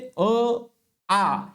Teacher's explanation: आपल्या गळ्यामधून जे ध्वनी आपण उच्चारत असतो तर अशा वर्णांना किंवा अशा ध्वनीला कंठवर्ण असं म्हटल्या जात